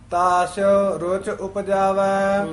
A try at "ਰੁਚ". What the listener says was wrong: ਰੁਚ ਜਿਹੜਾ ਪਦ ਹੈ ਪੋਲਾ ਉਚਾਰਨ ਕਰਨਾ ਹੈ, ਰੁਚ ਨਹੀਂ ਕਹਿਣਾ।